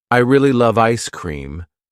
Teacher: the word love is stressed, giving the sentence its energy